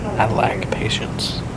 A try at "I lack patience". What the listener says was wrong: Lack. Sounded like you were saying you like, but saying it like a hick way.